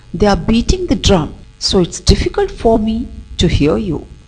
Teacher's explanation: Here, beating and drum, they are stressed, then difficult and here are stressed. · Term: sentence stress